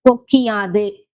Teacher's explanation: இகரம் தனது ஒரு மாத்திரை அளவிலிருந்து அரை மாத்திரையாக குறைந்து ஒலிப்பது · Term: குற்றியல் இகரம்